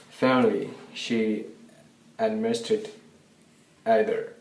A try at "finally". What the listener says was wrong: so he struggles a little bit with the l sound